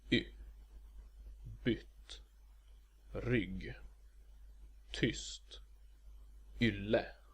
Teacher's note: Short Y is pronounced y, and is the same as short I, but with lip rounding. And remember to pout.